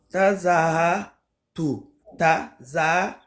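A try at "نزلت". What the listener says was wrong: C'est pas ta, ça. Regarde, il n'y a qu'un seul point. Oh, yo, yo, c'est pas ta. Voilà, na. Nazaltu.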